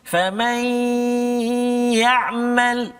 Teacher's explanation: Kemudian nun mati bertemu dengan ya. Famai nun mati masuk dalam ya, dengung 2 harakat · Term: idgham ma'al gunnah